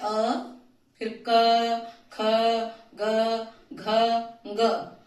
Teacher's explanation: ग में यहाँ कंठ तो लगता ही है, साथ में नासिका का भी प्रयोग होता है। इसलिए ग जो पंचम वर्ण आता है क वर्ग का, उसका उच्चारण स्थान केवल नासिका नहीं है और न केवल कंठ है।